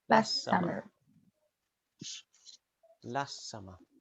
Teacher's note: the t can become glottal this means the t is half pronounced